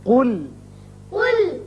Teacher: قاف پر پڑھیں، لام کو اچھی طرح باریک